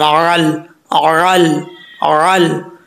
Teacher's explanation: अब यहाँ पर आइन है, आइन को पढ़ते हुए आपने ख़ास ख्याल रखना है कि आइन को अपने मखरज से निकालना है, आइन की आवाज़, आइन को अदा करते हुए हमजा की आवाज़ नहीं आनी चाहिए, आइन लाम ज़बर अल अल अल।